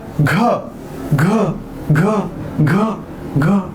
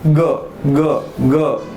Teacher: शेवटी कशाचा आवाज येतोय? ह चा आवाज येतोय. म्हणून घ हे महाप्राण आहे.